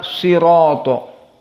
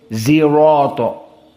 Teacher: dia tidak bisa membaca Shad tapi dibaca ismam Z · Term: ismam Zai